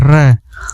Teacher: वह व्यंजन जिसके उच्चारण में जिह्वा के 2-3 बार कंपन करना पड़ता है। इसको उच्चारण करने में जिह्वा को 2-3 बार कंपन करने पड़ जाता है। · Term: प्रकंपित वर्ण